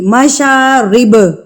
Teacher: با وقفاً کلکلا کریں گے کیونکہ ہم اس پہ وقف کر رہے ہیں، اس لیے ہم یہاں پر اس کو ہلا کے پڑھیں گے۔